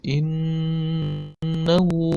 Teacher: Pada kata innahu, ini ada huruf nun bertasdid, maka hukumnya adalah ini gunnah bacanya. Dibaca dengung, ditekan selama 2 harakat. Innahu, pada kata hu juga dipanjangkan sepanjang 2 harakat.